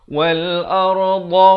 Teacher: Dha makhrajnya di tepi lidah. Tepi lidah di kanan ataupun kiri. Kalau tepi kanan, bawa ke kanan.